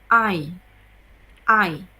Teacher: I is a long vowel sound. It starts with A and moves to I.